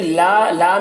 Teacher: لا میں الف مدہ ہے تو اسے ایک الف کے برابر کھینچیں گے